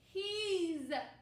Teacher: And he is becomes he, z, he's. We have the buzzing sound for S.